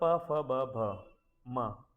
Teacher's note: ये ओष्ट से उच्चार होते हैं। इन्हें ओष्टीय कहते हैं।